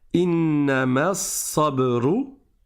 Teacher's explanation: Donc du ma, je passe directement au sad, je ne prolonge pas ici.